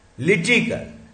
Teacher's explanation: ल पे आया हुआ है स्ट्रेस